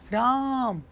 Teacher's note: तो यहाँ लास्ट जो मौ है ना, इस पे जोर पड़ रहा है, इसके उच्चारण में 3 मात्रा का समय लग रहा है, इसलिए ये प्लुत स्वर में आ जाएगा